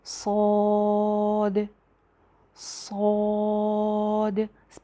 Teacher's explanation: दूसरी बात, इसको लंबा करके पढ़ना है, इसके ऊपर मद है। सौद, सौद, पहले आवाज़ जो है वो सीटी की आएगी, ज़ुबान पीछे से ऊपर उठेगी, सौद। और अलिफ भी जो है वो इसका मोटा हो जाएगा।